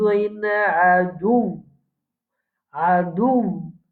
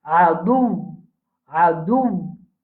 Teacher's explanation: c'est comme si il y a un waw sakin et un waw qui est mutaharrik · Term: Le waw et la shadda